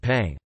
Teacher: those speakers that have a velar nasal for word-final /n/ make pan sound like pang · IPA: ['paŋ]